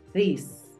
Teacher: Puede tener cierta similitud con la D en español, pero no es una D así seca. Tú tienes que emitir un viento.